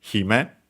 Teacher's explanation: on its own is accented on the Hi